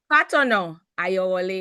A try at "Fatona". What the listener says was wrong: Fatono. But it's an A.